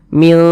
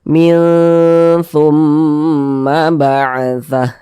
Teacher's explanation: jangan dibaca jelas minnya, tapi minnya itu disamarkan. Mil, seperti itu.